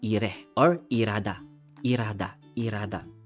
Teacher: Almost hindi napapronounce yung hiyot natin. Or yung H sound.